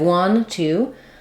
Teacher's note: for the number two just know that we do say that with the true oo vowel